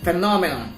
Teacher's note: We put the secondary stress on the second syllable, which is on noun.